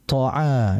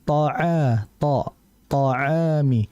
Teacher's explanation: jumhur dan mayoritas ulama memasukkan th ini kepada sifat jahr yang tidak diperbolehkan adanya udara yang keluar